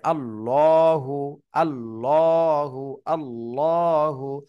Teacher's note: জিবটা হালকা উপরের দিকে চাপ থাকবে তাহলে দেখবেন যে মোটা আওয়াজ হবে